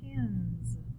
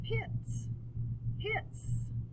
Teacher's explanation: the top word sounds sort of like a z pins but the bottom one has an s sound